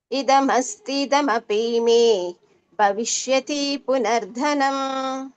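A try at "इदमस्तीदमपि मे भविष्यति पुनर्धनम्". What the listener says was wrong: ಇದಮಸ್ತಿದಮಪಿ ಅಸ್ತಿ ಎಳಿಬೇಕು ದೀರ್ಘ ಇದೆಯಲ್ಲ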